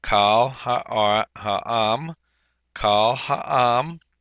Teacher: This is not Kol, but Kal, because the holum that would normally be here is reduced down to a kametz hatuf, which is you have a changeable long.